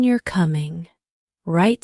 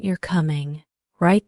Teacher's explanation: the first one has a rising intonation and the second has a more neutral tone